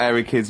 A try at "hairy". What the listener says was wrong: Sorry, I noticed both of you there dropped the H, or the H, or however it's pronounced. airy, hairy, hairy children, not sort of airy, kind of light-headed or...